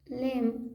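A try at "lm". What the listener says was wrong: लम नहीं बोलते, म बोलते हैं, म।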